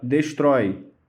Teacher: Então a palavra destrói, ela termina em ditongo aberto.